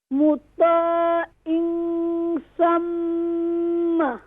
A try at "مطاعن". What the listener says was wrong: No, in. Pronounce ain sound. Don't pronounce hamza sound. مطاع is a wrong. مطاعن. Ain sound is pronouncing from middle of throat. Ta is recite is more full mouth.